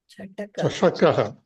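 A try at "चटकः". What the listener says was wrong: Chataka, not Chashaka. Chashaka is tumbler, glass.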